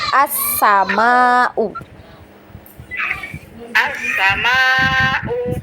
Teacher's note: Sa-nya dipendekkan, huruf S-nya jangan panjang.